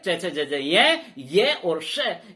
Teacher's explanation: च, छ, ज, ये और श, इनका उच्चारण तालु से होता है।